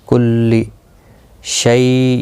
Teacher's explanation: یا لین ہے، تھوڑا نرمی کے ساتھ کھینچ کر ادا کریں گے